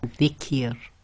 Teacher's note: So simplified rule for that is whenever the ra carries a kasra and it's going to be pronounced, or the last sound before the ra, when the ra is behaving as sakin or is actually sakin, is a kasra, then it's going to be tarqeeq, i.e. light or empty mouth, said with a nice big smile